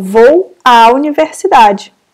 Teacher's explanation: a crase é o fenômeno da junção desses dois sons